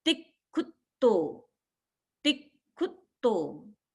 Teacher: ती पर दबाव आया क्योंकि पीछे संयुक्त अक्षर है, और खू पर दबाव आया क्योंकि पीछे भी संयुक्त अक्षर है